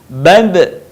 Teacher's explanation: Ketika huruf Ba dalam posisi mati, suaranya terdengar mantul.